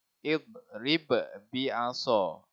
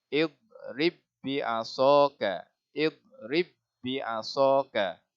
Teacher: Kita idghamkan huruf ba sakinah kepada ba yang berharakat, yang berbaris. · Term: idgham mutamathilain